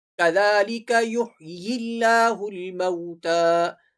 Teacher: كَذَلِكَ يُحْيِي اللَّهُ الْمَوْتَى، كَذَلِكَ کی ذال جو ہے وہ نرم پڑھی جائے گی، ذال کے اوپر کھڑی حرکت ہے، كَذَلِكَ يُحْيِي اللَّهُ الْمَوْتَى، اللہ کا جو لام ہے وہ باریک پڑھا جائے گا، كَذَلِكَ يُحْيِي اللَّهُ الْمَوْتَى، اور یہاں پر تا کے اوپر کھڑی حرکت ہے۔